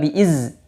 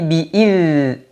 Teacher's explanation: kasrah itu vokalnya i ya biidnih pembacaan dalal sukun dalal sukun dalal sifatnya rakhawah maka suaranya dialirkan tapi tidak boleh ada nafas tidak boleh juga ada suara saofir suara tajam seperti Zai Bukan